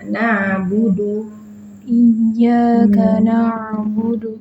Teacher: Perhatikan ain yang disukun juga nggak boleh berhenti ya suaranya. Terus mengalir.